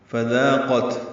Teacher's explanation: تا ساکن پہ ہمس ہوگا